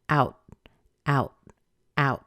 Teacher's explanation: The T at the end is held, so it means that you start to make the T, but you don't push a lot of air out after it.